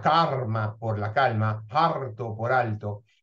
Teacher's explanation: la neutralización un resultado único que en Andalucía en la costa del Pacífico suele ser la vibrante r